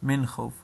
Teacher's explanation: نو دا نون موږ اظهاروو. اظهار دا معنا چې هغه نون ښکاره کېږي. اوس د نون ساکن څخه وروسته د حروف حلقي څخه راغله، نو موږ دا نون اظهاروو، ښکاره کوو.